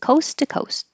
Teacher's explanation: And you hold the final T.